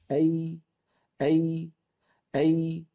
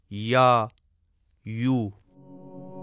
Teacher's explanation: اس میں زبان کا درمیانی حصہ اوپر کو اٹھتا ہے اور اس کا مخرج اس جگہ تنگ ہو جاتا ہے جہاں ہم چھوٹا سا سفید نقطہ دیکھ رہے ہیں، جیسے یا، یو. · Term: یا کا مخرج